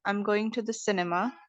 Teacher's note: these are falling intonations when you're not exactly waiting for a response